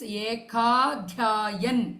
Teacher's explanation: So here ekadhyayam becomes ekadhyayan. Adhyayam, one adhyayam, that is dha mahaprana im becomes in anuswara.